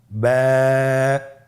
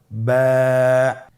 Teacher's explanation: বা হরফে টান হবে, এক আলিফ টান।